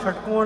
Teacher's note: शलजम वाला सा नहीं, मूर्धन्य शकार, षटकोण वाला।